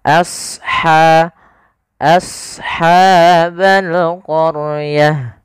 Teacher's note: izhar halqi maka dia harus yang Ha ini ada sifat namanya sifat hamus mengalirnya nafas